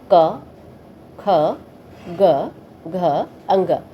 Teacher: इन वर्णों की ध्वनियाँ कंठ से निकलती हैं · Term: क वर्ग